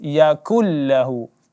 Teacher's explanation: Dalam membaca Al-Quran tidak dibaca yakun lahu, tapi langsung kita baca yakul lahu. Idgham bila gunnah ya. Nun mati bertemu lam. Maka langsung kita baca jelas yakul lahu.